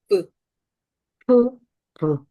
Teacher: 부 했을 때 윗니가 아랫입술을 살짝 물어요. 터치하거나 그쪽에 가까이 접근하고 있죠. 물어도 되고 안 물어도 됩니다. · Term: 프리커티브